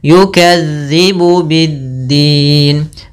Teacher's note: Kemudian berlafal dzal lagi, hati-hati jangan sampai yukadzibu biddin, dia dzal ujung lidah nempel dengan gigi seri atas.